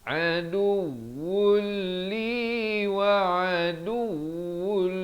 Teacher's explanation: Aduwul, idgham bila gunnah, masuk tanpa dengung. Daripada wun jadi wul